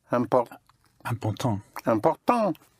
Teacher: The IN and IM is pronounced un.